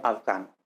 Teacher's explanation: La consonante F puede pronunciarse como V, que es un sonido labiodental sonoro porque durante su realización vibran las cuerdas vocales como en la secuencia afgano pronunciada como afgano.